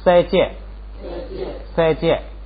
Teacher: 它变成平调碰到后加字塔就变成降调，所以就变成四声